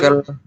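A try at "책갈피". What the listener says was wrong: Ya, cegel Jadi gioknya naik ke A. Ini kan ada giok di akhir nih, ya. Bukan cek-el, tapi C gioknya naik ke sini, ke iyang. Jadi cegel.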